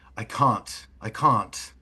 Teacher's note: So, a little more crisp on the T's, those taller rounded vowels.